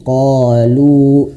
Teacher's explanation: qolu panjangnya satu ayun saja